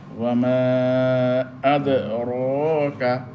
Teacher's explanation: র এখানে মোটা হবে, করিয়ার র পাতলা, আর আদে রকার র মোটা হবে, কারণ রর মধ্যে জবর